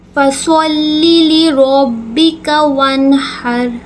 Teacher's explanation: صاد کو ہم ہمیشہ پر کر کے پڑھتے ہیں، موٹا کر کے پڑھتے ہیں،